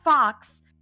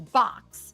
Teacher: your fricative is turning into a stop sound. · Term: stopping of fricatives